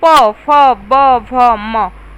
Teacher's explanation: होस्ट व्यंजन कहलाता है जैसे प बोलिए तो आप लोग के दोनों जो लिप्स है होठ है सट जा रहे हैं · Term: ओष्ठ व्यंजन